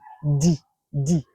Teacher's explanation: Le D, la langue est proche des dents. Là, c'est le D.